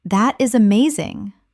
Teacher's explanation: When you say, That is amazing, your tone rises with excitement.